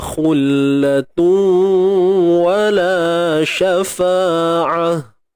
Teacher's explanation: Huruf ain sempitkan di tengah kerongkong kita, kemudian matikan ta yang tertutup macam ni dengan bunyi ha.